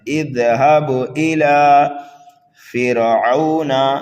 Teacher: را کو باریک پڑھیں گے اس لیے کہ را ساکن سے پہلے زیر اصلی ہو تو را کو باریک پڑھا جاتا ہے